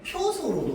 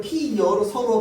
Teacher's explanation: 어를 반모음 이 플러스 어로 발음했으니까 반모음 이가 첨가됐단 말이야. 자, 그래서 피어서를 피여로 서로 발음하면 얘는 반모음 이가 첨가된 겁니다.